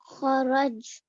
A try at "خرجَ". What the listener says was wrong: خرج, last letter کی حرکت پڑھنی ہے. خرج, ہاں دوبارہ بولیں, خرج, خرج.